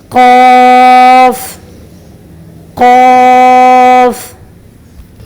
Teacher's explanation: قاف کو صحیح اور مفخمہ ادا کرنے کا طریقہ یہ ہے کہ زبان کے آخری حصے کو اوپر کی طرف اٹھائیں اور زبان کی جڑ یعنی اقصی لسان کو کوے لحاظ سے لگائیں تو قاف مفخمہ ادا ہوگا